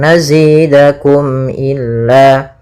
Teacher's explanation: Tidak boleh ditahan suara mimnya tapi langsung nazidakum illa. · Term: izhar syafawi